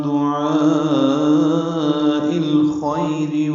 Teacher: دعاء یہ الف مدہ کے بعد حمزہ آنے کی وجہ سے مد متصل ہے. حمزہ کو الخیر کے لام سے ملا دیں گے تو من دعاء الخیر ہوگا.